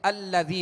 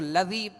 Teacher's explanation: حمزہ کو زبر دے کر اس کی زبر کے ساتھ ہم لام کو ملا کر ادا کریں گے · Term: حمزہ وصلی